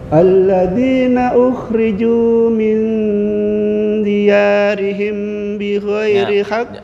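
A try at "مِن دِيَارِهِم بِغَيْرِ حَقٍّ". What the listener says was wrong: Jangan buru-buru, 2 ketukan. Diyarihim bi ghairi. Kalau diyarihim bi ghairi, nah itu kurang 2 ketukan tuh.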